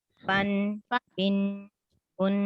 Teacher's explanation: تھوڑا سا نا اس کی آواز تھوڑی سی ناک میں جائے گی, بن. ایسے کر کے پڑھیں گے. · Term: غنہ